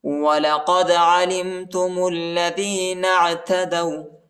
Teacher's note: عین کو گلے میں پڑھنا ہے، گلے کے درمیانی حصے میں پڑھنا ہے